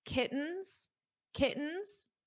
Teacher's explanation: In American English, when we have a T or two T's between vowels, we pronounce the T's as a very soft D.